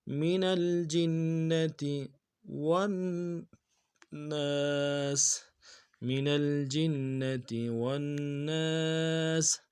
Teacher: جیم کو نون کے ساتھ ملانا ہے، تشدید ہے، زور دینا ہے